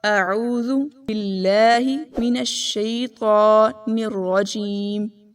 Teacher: لام کو پتلا پڑھنا ہے، یعنی باریک، موٹا نہیں پڑھنا